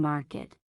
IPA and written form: ˈmɑːrkɪt (Market)